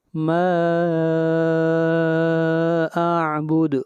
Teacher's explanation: ما اعبد ما کے اوپر مد منفصل ہے، اس کو 3 الف کے برابر لمبا کریں گے. اور اعبد دال کے اوپر قلقلہ، آواز کو ہلائیں گے